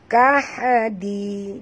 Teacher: Di sini lembut, ya. Huruf dal ni tak boleh tebal, ya.